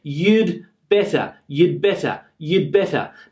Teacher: Now it almost becomes inaudible sometimes that there is a d here.